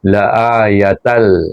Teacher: Kerana tanwin bertemu dengan huruf lam, memang huruf idgham kamil, tapi tak boleh dibaca dengan dengung. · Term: idgham bila gunnah